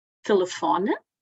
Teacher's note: Temos aqui um exemplo de uma palavra acentuada na penúltima sílaba